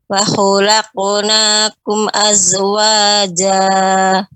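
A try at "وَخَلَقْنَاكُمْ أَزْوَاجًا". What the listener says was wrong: Kumnya di sini Ummu, ketika mengucapkan wa khalaqnakum, di sini sempurna, tidak menggantung pengucapannya wa khalaqnakum tidak seperti itu, tapi pengucapan mimnya sempurna wa khalaqnakum azwaja.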